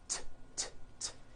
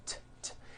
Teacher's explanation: it's unvoiced your vocal cords are not vibrating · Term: T sound